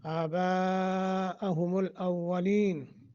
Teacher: یہاں مد متصل ہے، اس کو لمبا کریں گے، اولین واو کو موٹا، اولین۔